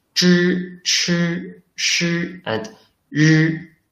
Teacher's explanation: These four 声母 are a series of catechumenals, which are pronounced with the tongue tip turned up and coordinating with the front of the heart palate.